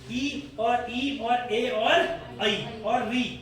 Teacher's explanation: अग्र मतलब जिसमें जीभ के आगे वाले हिस्से का प्रयोग हो, मध्य मतलब जिसमें मध्य वाले का प्रयोग हो, और जिसमें पिछला भाग का प्रयोग हो। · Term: अग्र स्वर